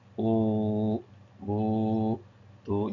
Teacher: Perbedaannya kalau wau adalah monyong atau bibirnya monyong. Sebab dia huruf makhraj syafatain. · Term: waw